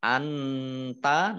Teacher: Innaka nun tasdid dibaca gunah atau mendengung, ditahan 2 harokat. Anta nun sukun bertemu dengan huruf ta, bacaan ikhfa dibaca samar-samar